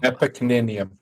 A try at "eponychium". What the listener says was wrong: No, because you added an extra N that doesn't exist there.